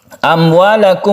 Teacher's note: Syafawi artinya bibir, bahwa makhraj dari mim itu adalah di bibir. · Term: idhar syafawi